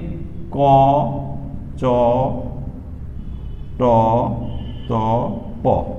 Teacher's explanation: বর্গের প্রথমটি হচ্ছে অল্প প্রাণ ধ্বনি, এগুলো উচ্চারণ করার সময় বাতাসের চাপ কম থাকে